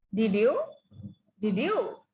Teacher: To sound sarcastic, you can use falling tone.